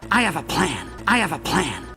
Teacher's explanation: have a plan 이렇게 세 단어처럼 느끼게 하는 게 아니라 한 단어처럼 리듬을 타면서 소리 낼게요. have하고 어가 붙으면 자음과 모음이 탁 하고 붙으면 보통 연음이라고 한다 그랬죠.